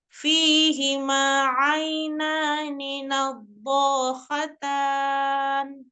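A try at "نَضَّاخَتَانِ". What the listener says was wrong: Sedikit aja, kurang sedikit lagi saja. Udah, itu udah dipanjangkan tapi cuma kurang sedikit ya. Nabbo, kayak menahan berat ya. Dia istitolah. Agak ditekan. Jadi kan secara makhraj ya kan, dua sisi lidah, dua tepi lidahnya kan secara bersamaan gitu ya.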